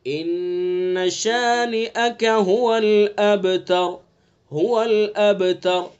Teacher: قلقلہ کہتے ہیں کہ آواز جیسے ہی وقف کرتے ہیں آواز پیچھے کو لوٹتی ہے